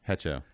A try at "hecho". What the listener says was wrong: Echo. Echo, the H is silent. I don't say Hecho.